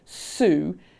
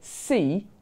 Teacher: the s in Sue is very different because I'm anticipating the oo vowel than if I say see when I'm anticipating the e vowel, and that makes it sound different.